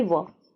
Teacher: वह वर्ण जिनका उच्चारण दांत और होठ दोनों की मदद से किया जाता है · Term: दंतोर